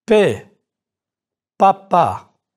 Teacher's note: If you hold a thin strip of paper in front of your lips when you say papa in English, the paper will move with your breath. In French, the P sound is not accompanied by the puff of air.